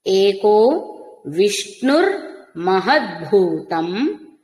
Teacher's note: అనుస్వరం మకారమే అవుతుంది తర్వాత పవర్గం ఉంది కాబట్టి